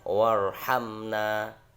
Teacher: Kalau yang pertama warhamna ini hamzahnya ada di tengah, maka tidak terbaca. Bukan wa irhamna tapi tidak terbaca hamzahnya. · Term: hamzah wasol